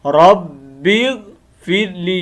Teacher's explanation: رب اغفر لی، یہ آگے با کو آگے ملانے کی وجہ سے اس کی یا جو ہے نا گر گئی ہے